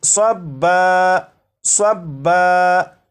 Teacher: یہ جو لفظ ہے یہ ہے صبن، صبن، وقف میں اسے پڑھیں گے صبا، صبا، یعنی دو زبر کو الف سے بدل کر